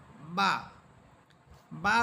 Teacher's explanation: বা দুই ঠোঁট থেকে উচ্চারিত হচ্ছে, এই বা হরফের দুই ঠোঁট থেকে উচ্চারিত হওয়ার কারণে এই দুই ঠোঁটের স্থান হচ্ছে মাখরাজের স্থান।